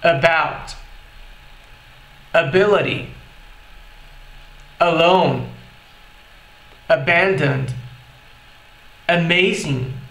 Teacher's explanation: O que acontece nesses exemplos é que a gente consegue perceber com muito mais tranquilidade o som do schwa, justamente porque ele está vindo logo no começo da palavra